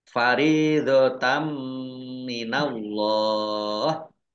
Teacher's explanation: dibaca ghunah atau mendengung ditahan dua harakat minallah Allahnya dibaca tebal karena harakat di depannya fathah kemudian lam